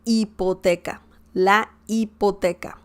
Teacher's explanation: the letter h doesn't have any sound so don't say hipoteca because that is incorrect you just gotta mute the letter h and say ipoteca la